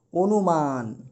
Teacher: আমরা এখানে দেখেছি হ্রস্বই দীর্ঘই, হ্রস্ব বা দীর্ঘ যদি উল্লেখ থাকে, তাহলে এই শব্দের শুরুর অটার উচ্চারণ সংবৃত হবে, অর্থাৎ ও এর মতো হয়ে যাবে।